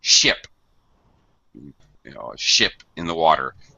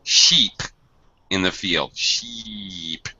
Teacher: I'm widening my mouth. I'm using my muscles to pull my mouth apart. And it's a much longer sound.